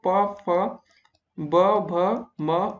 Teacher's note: पहला दोस्तों आपका बात आता है द्वयोष्ठ। इन उच्चारणों के उच्चारण में दोनों ओष्ठों का प्रयोग होता है